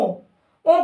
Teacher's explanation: ओ हमारा स्वर है और उसको थोड़ा सा नाक से बोला जा रहा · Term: अनुनासिक